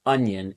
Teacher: that little squiggle Mark over the top of the letter that's the letter N which carries that Y sound immediately after the n Sound